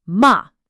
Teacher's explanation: The fourth tone is a sharp quick drop like you're giving a command.